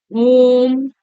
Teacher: है अब देखते हैं प्लुत स्वर क्या होता है त्रि मात्रिक जिसको बोलने में तीन गुना समय लगे उसको क्या कहते हैं प्लुत स्वर कहते हैं